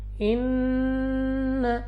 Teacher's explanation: ان اللہ یحب المحسنین، یہاں پہ ہمارے پاس نون مشدد غنہ کر کے پڑھیں گے، اور غنہ سے مراد یہ ہے کہ آپ نے ناک میں لے جا کر پڑھنا ہے ان، اور اس کو 2 سیکنڈ تک کھینچنا بھی ہوتا ہے۔